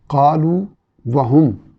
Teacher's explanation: واو جو ہے وہ مدہ ہے، وہ پیش کی آواز کو لمبا کر رہا ہے، اس لیے یہاں ادغام نہیں ہوگا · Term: واو مدہ